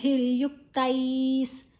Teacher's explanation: ವಿಸರ್ಗದ ಉಚ್ಚಾರಣೆ ಸ ಮುಂದಿನ ಅಕ್ಷರ ಸಾ ಇದೆ.